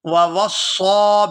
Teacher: یہاں واو کو صاد مشدد کے ساتھ ملائیں گے اور صاد مشدد کو پورا ادا کرتے ہوئے کھینچ کر ادا کریں گے کیونکہ اس کے اوپر کھڑی زبر ہے، ووصى بها ابراہیم بنیہ